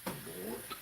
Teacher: The D is almost like a T.